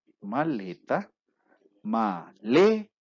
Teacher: la segunda sílaba es fuerte por lo tanto es una sílaba tónica